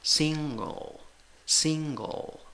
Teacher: la fuerza de voz va en la primera sílaba, contando de izquierda a derecha. En la primera sílaba tienes una I. · En la primera sílaba tienes una I. En la segunda sílaba, pero una I corta. La I con el punto es I corta. En la segunda sílaba tienes una schwa.